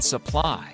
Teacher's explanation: an unstressed and toneless neutral vowel sound